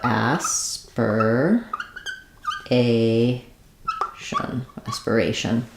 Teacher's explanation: in aspiration we have some secondary stress on the a which means it's going to be our a vowel like we